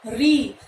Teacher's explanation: री को कहा जाता है मूर्धन्य, इसलिए इसका उच्चारण स्थान मूर्धा होगा।